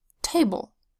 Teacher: It should drop twice because table is a two-syllable word